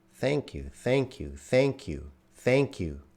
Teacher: that th is unvoiced